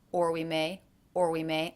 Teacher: I did not reduce the vowel or